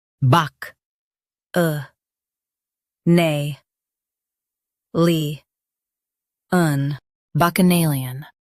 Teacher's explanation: Stress nay and keep lee light.